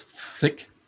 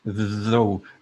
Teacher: So even though this is, we write this the same, TH, there are different sounds, right? This is thick, not vocalized, and this is though vocalized, right? Here you use your vocal cords and here you don't.